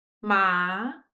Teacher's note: So remember, you will be start very low and going to up. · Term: second tone